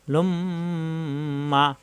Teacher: মিম এবং নুনের রুপে তাসদিদ আসলে তখন অজিব গুন্না হবে